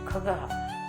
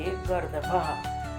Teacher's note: क वर्ग वर्णा इन्हें कंठ्या भी कहते हैं क्योंकि इनका उच्चारण कंठ से किया जाता है